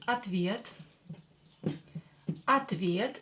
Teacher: O will be pronounced as A because it's not stressed.